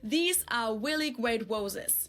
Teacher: RS with a W sound because they think it's the closest sound to an English R